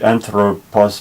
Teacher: the first vowel is a long O, and the second O is a short O